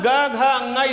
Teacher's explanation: तीसरा चौथा पांचवा वर्ण आपका क्या होगा घोष वर्ण होगा